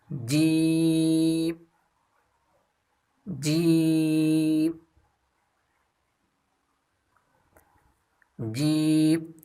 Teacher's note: اس کی مخرج ہے زبان کا درمیان اور اس کے مقابل اوپر تالوں کے میلاب سے ادا ہوتی ہے